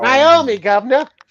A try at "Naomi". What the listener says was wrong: It's Naomi. There's no fucking I in her name. It's Naomi.